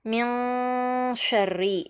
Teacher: எழுத்துக்கள் 15 எழுத்துக்களில் ஒரு எழுத்து ஷீன் அது வந்திருக்கு இங்க நம்ம இந்த சுகூன் பெற்ற நூனை குன்னா செய்து ஓதணும் மூக்கில் பாதியாக மறைத்து